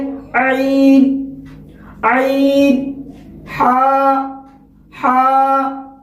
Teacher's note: حلق کا جو بیچ والا جو حصہ ہے، اس سے عین اور حا کی ادائیگی ہوتی ہے۔ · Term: وسط حلق